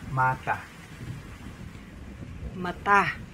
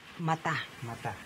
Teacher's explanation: Accent on the second syllable.